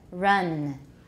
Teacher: we don't have friction in english we've got rounding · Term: english r